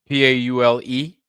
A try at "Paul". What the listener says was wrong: No E. Paul.